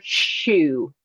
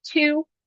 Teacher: sh is a fricative and it goes long, t is a stop sound, right? So we are stopping that sound overall.